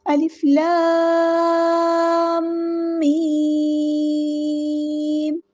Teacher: میم پہ بھی مد لازم ہو رہی ہے تو 6 کاؤنٹ ہم نے لمبا کرنا ہے